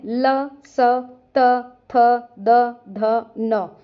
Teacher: जीभ दांतों को स्पर्श करेगी। उच्चारण स्थान दंत होने से ये दंत वर्ण है।